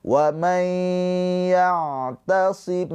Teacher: Ain sukun mempunyai sifat tawasud. Tawasut itu ada aliran suara sedikit pertengahan. Jadi enggak terlalu mengalir dan juga enggak tertahan.